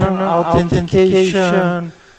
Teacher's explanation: Two issues where the AU floated from ah towards ow, and the TH floated from th towards t. So became basically a T sound.